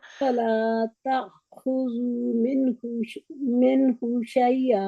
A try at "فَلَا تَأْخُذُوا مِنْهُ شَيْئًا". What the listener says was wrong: ابھی بھی آپ نے من پھر کہہ دیا، من نہیں ہے، من اظہار ہو رہا ہے نا جہاں پہ اظہار ہے، اظہار ہے، تو